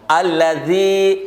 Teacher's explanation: الذی حروف لثویہ ہے، نرم پڑھیں گے، سخت نہیں پڑھیں گے، اس کو سخت پڑھیں گے تو زا بن جائے گا